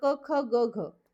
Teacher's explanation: क ख ग घ हा उच्चार करताना कंठ म्हणजे कंठातून आपलं तो उच्चार निघतो